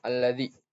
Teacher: di ayat alladzi itu terdapat mat tabi'i karena ada ya sukun yang sebelumnya huruf yang berharokat kasroh dan dibaca panjang 2 harokat